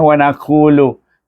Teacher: ku itu mad asli baca dua harakat sebab sebelum wau baris hadapan